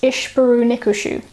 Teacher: the m of the dative has assimilated into the sheen of the accusative to create a double sheen · the m of arventive suffix has assimilated into the k of our dative to create a double k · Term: assimilation